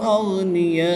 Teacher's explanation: الف مدہ کے بعد حمزہ اسی کلمے میں ہے تو یہاں پر مد متصل ہوگی. 3 سے 5 الف تک کھینچ کر پڑھیں گے